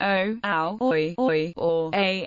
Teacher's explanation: Holem, o, is, depending on the subdialect, pronounced o, ow, oi, or a in Ashkenazi Hebrew, where it is o in modern Hebrew.